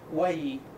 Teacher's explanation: si tenemos la palabra guayi y quiero decir mi casa, tengo que alargar la vocal